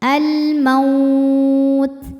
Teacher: Kemudian ada hukum alif lam ta'rif yaitu alif lam qamariyah. Sebab alif lam menghadapi huruf qamariyah yaitu mim. Maka lam dibaca izhar atau jelas.